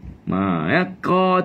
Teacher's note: Ka tu maknanya pangkal lidah dah naik.